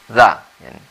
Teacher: cara membacanya gigi kita jangan terlalu rapat, kemudian lidah kita letakkan di antara gigi atas dan gigi bawah tersebut. Jadi za-nya itu tipis.